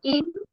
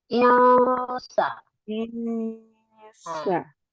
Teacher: kita samarkan ya dengan menahan dan bersiap ke makhraj sin. Ya, sa di bareng, kemudian nunnya kita arahkan ke sana, gitu ya.